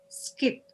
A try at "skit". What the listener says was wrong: That's good.